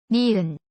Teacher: when you say it the tip of the tongue touches the back of the upper front teeth and gums